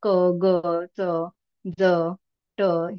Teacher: तर हे ह सारखे जे उच्चार होतात ख घ छ झ त्याला आपण महाप्राण वर्ण म्हणतो. आणि अल्पप्राण ज्याच्यामध्ये ह चा उच्चार नसतो, ह सारखा उच्चार नसतो, तर तो आपले अल्पप्राण म्हणजे मग क ग च ज ट हे सगळे ते अल्पप्राण शब्द वर्ण होतील.